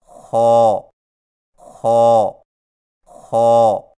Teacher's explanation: خا کی ادائیگی میں زبان کی جڑ کو تالو کی طرف بلند کرتے ہوئے موٹی آواز میں پڑھیں